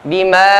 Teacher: Mad tabi'i bertemu dengan hamzah pada kalimat yang sama, maka hukumnya adalah mad wajib muttasil. Ya. 4 harokat sampai 5 harokat.